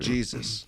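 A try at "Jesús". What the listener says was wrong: You say it like JEESIS.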